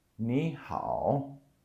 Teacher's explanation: So the 你 becomes the second tone.